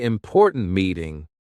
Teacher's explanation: Say important meeting with a sharp T at the end of important.